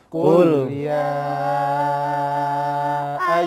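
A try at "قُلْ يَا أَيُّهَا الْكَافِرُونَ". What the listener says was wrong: Kemudian vokalnya tetap fathah. A. Qul ya ay. Sempurna mangapnya. Jangan qul ya. Nah, ya ini enggak sempurna fathahnya. Tapi buka mulutnya.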